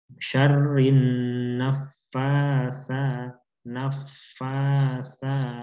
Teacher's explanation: Kita panjangkan karena di sini fa-nya panjang, kemudian sa-nya juga panjang.